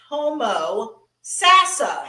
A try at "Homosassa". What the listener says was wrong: Homosassa. There's no A in there.